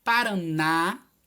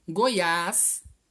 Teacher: São vários estados brasileiros em que são palavras oxítonas, ou seja, que a última sílaba é a mais forte e tem acento.